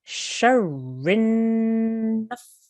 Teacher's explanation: I want you to hold on this noon for a couple of seconds. This nasal sound here for 2 seconds.